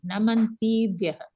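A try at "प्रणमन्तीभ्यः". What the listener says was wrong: Pra is there, no?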